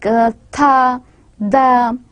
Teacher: tongue, it is inserted between the teeth, and such sounds are known as interdental sounds